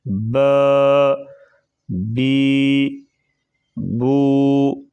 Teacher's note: ان تینوں کو ایک الف کے برابر لمبا کر کے پڑھیں گے، اس سے زیادہ نہیں لمبا کریں گے۔